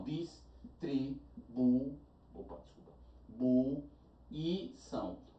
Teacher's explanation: A sílaba mais forte de distribuição é o são e não o I. Então tem que ser a sílaba mais forte.